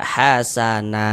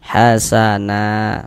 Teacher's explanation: kalau kita berhenti di huruf yang memiliki tanda baca fathatain maka dia terjadi mad iwad